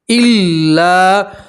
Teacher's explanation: اور لام کے ساتھ الف مدہ ہے اس لیے آپ ایک الف کے برابر کھینچیں گے